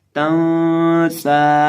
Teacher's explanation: अब इस लफ्ज़ के अंदर ये जो हमारे पास सीन है, इसको हम सीटी की आवाज़ पैदा करके पढ़ेंगे और इसको हम लंबा भी करेंगे। और इसी तरह नून के ऊपर यहाँ हम इख्फा करके पढ़ेंगे, तं सा, तं सा।